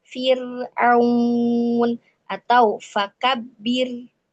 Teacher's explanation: Nah, itu ro-nya dibaca tipis, tidak boleh dibaca tebal.